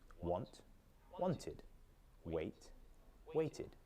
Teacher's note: be careful because using id at the end of a word increases the number of syllables by one